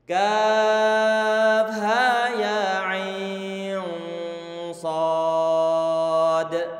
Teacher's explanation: Kaf 6 harokat, ha 2 harokat, ya 2 harokat, ain 4 ataupun 5 harokat, sedangkan sad 6 harokat.